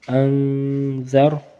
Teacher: یہاں پہ ہم نے اخفا کرنا ہے، نون کو کھینچنا ہے تھوڑا سا · حمزہ نون زبر ان، ذال را زبر ذر، انذر، اور را کو پر پڑھنا ہے کیونکہ را کے اوپر تو کچھ نہیں ہے لیکن اس سے پہلے زبر ہے